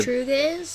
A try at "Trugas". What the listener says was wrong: No, Trugas, because remember the P was silent.